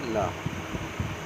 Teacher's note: जिनके उच्चारण में जिह्वा का अलग भाग मसूड़ों को छूता है और वायु पार्श्व आसपास से निकल जाती है